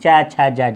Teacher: स्पर्श भी कर रही है और संघर्ष, संघर्ष के साथ बाहर निकल रही है हवा। इनके बोलने में स्पर्श संघर्षी व्यंजन चा छा जा जा को यहाँ को कहते हैं।